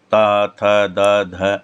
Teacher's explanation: तो इस इनको इनका जो उच्चारण स्थान है वो दांत से यानी जीभ दांत से टकराती है। · तम यह दंत्य है यानी कि जीभ दांत से लगती है